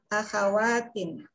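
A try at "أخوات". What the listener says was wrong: Ya, akho ya, bukan akha, akho.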